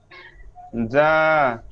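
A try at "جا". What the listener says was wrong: এটা হয় না, এটা আবার, এটা আবার শব্দ হবে যা। স্পার্ক করলে যেমন শব্দটা আসে, জ- জ- যা যা যা যা যা যা যা, বলেন তো যা। যা যা যা যা। জিব্বা কিন্তু আমার উঠে না, দেখেন আপনারা জিব্বা উঠেই ফেলান, খেয়াল করেন জিব্বা উঠবে না। যা যা, মুখটা লড়তেছে কিন্তু জিব্বা ওইখানেই থাকে।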